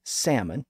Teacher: but in this case the L remained silent which is why salmon is pronounced without the L today in most cases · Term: silent L's